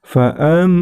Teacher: ada mim tasydid, maka itu termasuk hukum bacaan gunnah. Maka cara membacanya ditahan dan diperpanjang